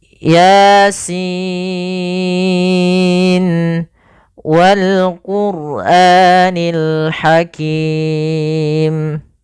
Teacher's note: pada lafal bacaan Yasin ini yang kita panjangkan adalah Sin